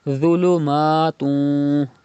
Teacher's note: Pronounce dha without whistle and with thicker voice because dha is from mustalia letters.